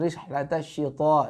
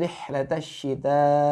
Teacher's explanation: Huruf ta'nya tipis karena dia istifal